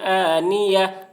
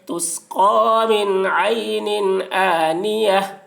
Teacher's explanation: من عین آنیہ، تا دو زیر تن، آنیہ میں گولتا ہے، گولتا کو حالت وقف میں ہائے ساکنہ سے بدل کر پڑھیں گے ، تسقا من عین آنیہ، لا تسمع فیہا لاغیہ، لام الف